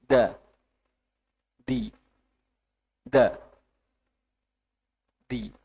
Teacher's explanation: tidak terlalu medok tidak terlalu banyak udara yang keluar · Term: huruf Dal